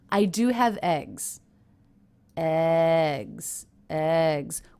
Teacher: the word eggs even though it's a Content word a noun which is usually stressed doesn't have that much stress I notice because it's at the end of a sentence I